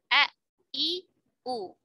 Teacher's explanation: huruf hamzah tidak ada aliran nafas karena tadi ya pita suaranya tertutup. Terutama ketika sukun, lebih kuat lagi ya jaharnya.